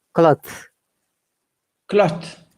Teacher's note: when our tongue touches the tooth it becomes unvoiced th